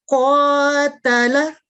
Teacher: तीसरी मिसाल में देखिए क़ ता ला, तो इसको इस तरह मिला के पढ़ेंगे क़तला, क़ 2 सेकंड, ता और ला 1-1 सेकंड। और इसमें क़ जो है यही आज का हमारा सबक है कि फतह इशबाइया को 2 सेकंड लंबा करते हैं।